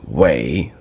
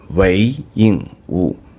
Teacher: normally the character Wei is reading as Wei, the third tone. And when you're reading his name, it should be the second tone